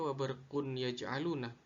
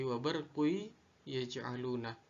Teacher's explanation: Suara tanwin pada huruf qaf sehingga seakan tidak pernah ada dan dimasukkan ke dalam huruf ya, seakan huruf ya ini bertasdid